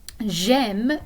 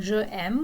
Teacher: you're going to drop the vowel of je, the E, and you're going to connect it directly to the verb that comes after if it starts with a vowel sound or if it starts with a silent H.